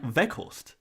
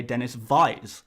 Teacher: the way you pronounce the uh w sound is more like a a v